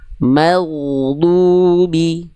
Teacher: Huruf ghain jangan sampai keluar ada nafasnya. Kalau huruf ghain keluar ada nafasnya nanti samar-samar dengan huruf kha. · Berarti mimnya tipiskan dulu baru ketebalkan huruf ghainnya.